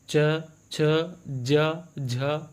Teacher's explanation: उच्चारण स्थान तालु होता है